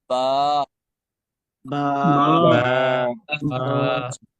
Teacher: اور اس کا پڑھنے کا طریقہ یہ ہے، میں پڑھنے لگا ہوں، دونوں ہونٹوں کے تری والے حصے، یعنی دونوں ہونٹوں کے جب دونوں ہونٹ مل جاتے ہیں تو ہونٹ کا وہ حصہ جو منہ کے اندر یعنی جو گیلا گیلا ہوتا ہے اس سے یہ با ادا ہوتا ہے. دونوں ہونٹوں کے تری والے حصے کو ملانے سے با ادا ہوتا ہے